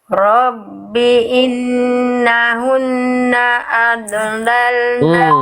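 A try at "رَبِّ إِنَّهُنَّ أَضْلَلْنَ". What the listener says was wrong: Adolal. Nah, jangan mantul lagi. Robbi innahunna adlalna kathiram.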